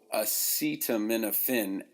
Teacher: acetaminophen actually begins with what's called a schwa it's an upside down e if you look at it in